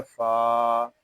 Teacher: फा ये हरूफ मुस्कालिया में से है, इसको पूरी यानी मोटा पढ़ेंगे।